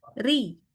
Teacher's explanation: kita tekan pada ya itu jadi tasydid tapi satu kali tekan satu harakat